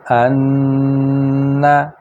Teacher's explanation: یہاں دیکھیں کہ ان صرف ناک سے آواز لمبی ہوئی ہے، جبکہ یہاں پہ انا ناک سے بھی آواز لمبی ہوئی ہے اور منہ سے بھی، چونکہ یہاں پہ نون مشدد شد والی کی وجہ سے غنہ ہو گیا ہے، اور اس پر زبر اور آگے الف کی وجہ سے الف مدہ آ گئی ہے، اس وجہ سے دو آوازیں لمبی ہو گئی ہیں۔